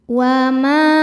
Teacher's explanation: Sebab ada alif sebelumnya berharakat fathah. Cara bacanya huruf mim ini panjang dua harakat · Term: mad thobi'i zohiri